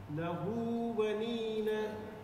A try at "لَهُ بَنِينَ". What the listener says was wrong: Join them together. Don't cut in the لَهُ بَنِينَ If you stop لَهُ بَنِينَ you will make more stretch. So لَهُ بَنِينَ